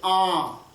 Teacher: आ यदि है और उसके ऊपर चक्रबिंदी लग गया तो आ जब हम बोलेंगे तो थोड़ा नाक से भी हवा बाहर निकलती है, जैसे आ। तो उसमें मुख को थोड़ा आधा ही खोलना पड़ता है आ का उच्चारण करने के लिए।